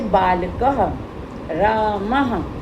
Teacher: विसर्ग होती है, उसका जो आवाज होती है हमारे गले से निकलती है